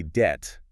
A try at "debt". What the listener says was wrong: And now just let the B disappear.